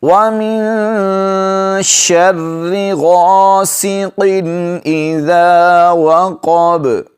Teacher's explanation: نون پر اخفا کریں گے، آواز کو ناک میں چھپائیں گے